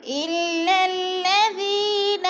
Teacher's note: دونوں لام مشدد ہے، سختی سے جما کر پڑھیں گے۔